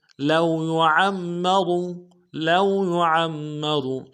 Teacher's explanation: لو میں لام کو واو کے ساتھ ملانا ہے, واو لین بغیر کھینچے پڑیں گے